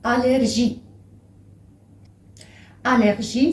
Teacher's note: Allergie, c'est allergie, toujours avec le R roulé.